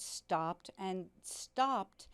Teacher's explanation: you have the s which is unvoiced you have the p which is unvoiced